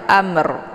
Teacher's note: jadi ditekan dulu mimnya kemudian dibunyikan makhraj rnya jadi untuk ro ini dibaca tebal ya jadi jangan Amr ya Amr jadi dibaca tebal Amr ya kemudian